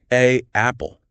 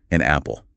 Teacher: You have to physically pause your breath, close your vocal cords, and restart the airflow to make those two vowel sounds back to back. A apple. It feels really awkward, like I'm glitching.